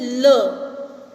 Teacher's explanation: जैसे ल, मतलब बीच में से ना निकल के ल का साउंड कहाँ से आ रहा है? जीभ के साइड में से आ रहा है। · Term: पार्श्विक